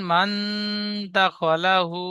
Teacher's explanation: সাকিনের পরে হরুফে ইকফার 15 টি অক্ষরের মধ্যে দাল এসেছে তাই নুন সাকিনের আওয়াজকে নাকে তুলে এক আলিফ পরিমাণ করে পড়তে হবে